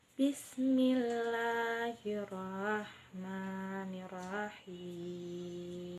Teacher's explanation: Lalu pada kalimat basmalah ini kesalahan yang sering terjadi yaitu ketidaksempurnaan pengucapan huruf H kecil pada ar-Rahman dan arrahim sehingga dibaca seperti H besar